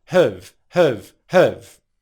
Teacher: give it a rhythmic pronunciation we're going to take that /hæv/ vowel sound and reduce it to a schwa sound